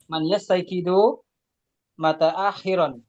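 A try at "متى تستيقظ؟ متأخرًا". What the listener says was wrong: Harokatnya salah. Mutaakhiran.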